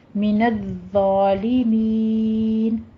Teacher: ظالمین میں آپ نے ضا پہ سیٹی کی آواز نہیں لانی ہے · ضا کو آپ نے نرمی سے پڑھنا ہے اور تشدید کو مکمل ادا کیجیے